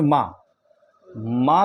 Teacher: मकार का उच्चारण स्थान ओष्ठ तो होता ही है, लेकिन नासिका भी होता है, ओष्ठ और नासिका।